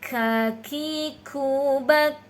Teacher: Kalau kaf itu berdesis karena dia hamas.